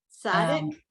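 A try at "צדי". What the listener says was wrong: So on Sadi, even though I used to call it Sadiq, it's really Sadi.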